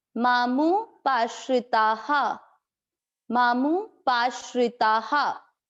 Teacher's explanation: आ की मात्रा है ता में, इसलिए विसर्ग को पढ़ा जाएगा हा।